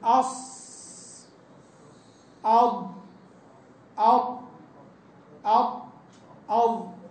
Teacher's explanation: يصير الحنك على اللسان زي الطبق كده مطبق عليه وقال بعضهم يكون اللسان مقوسا عند النطق بحروف الاطباق كما ذكر